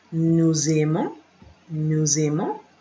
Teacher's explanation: Remember the liaison because of the S, the A coming after the S.